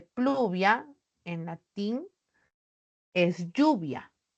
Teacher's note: los grupos iniciales de latín pl cl FL evolucionaron a una elle